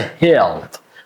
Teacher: But, there is one little issue because the l is coming and l is a dark l sound here. So, when you pronounce l as a dark l and when it comes at the end, you add one extra sound before and that's a reduced schwa sound and that is a uh sound.